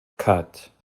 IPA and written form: kʌt (cut)